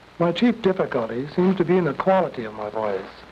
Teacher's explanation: The throat specialist told me that my vocal bands do not quite come together. This gives my voice a harsh quality.